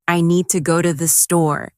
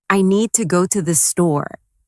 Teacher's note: The stress is on need and store. While to and the are softer and faster